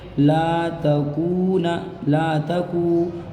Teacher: وقاتلوہم حتی لا، تا زبر تا، تا کے اوپر زبر ہے، دیکھیے زبر کو نہیں کھینچتے ہیں، کاف واو پیش کو، یہ دیکھ لیجئے، یہ واو ہے، واو ساکن سے پہلے اس کاف کے اوپر پیش ہے تو واو مدہ ہوگا، واو مدہ کو ایک الف کے برابر کھینچیں گے